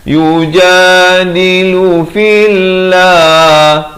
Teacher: lafz jalalah di sini dibaca nipis, jangan pula dibaca tebal.